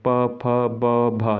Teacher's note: ये ओष्ठ्य वर्ण है, इसे बोलोगे तो होठों का उपयोग ज़्यादा होता है